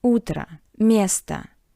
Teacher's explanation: in these two words, o sounds like a because it's unstressed. In the first word, u is stressed, o is unstressed, that's why o sounds like a soft a.